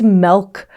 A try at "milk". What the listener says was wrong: There's a vowel change there for certain.